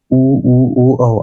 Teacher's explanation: इसमें मुँह का जो आपका ओठ है वो गोल हो जाता है। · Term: वृत्तकार स्वर